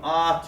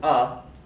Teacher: if i go from off to up the tongue is raising